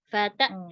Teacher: Kalau hamzah sukun Umi langsung tutup pita suaranya, tidak ada lagi yang mengalir